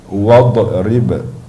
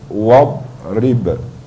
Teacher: Bila dibaca surah Yasin, terkadang akan kedengaran dia baca wadrib, ya. Dia huruf dad tu tidak ada qalqalah, tidak ada lantunan bunyi, ya. Bila berlaku lantunan bunyi tersebut, maka itu kesalahan pada sifat huruf, ya. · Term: istitalah, tertahan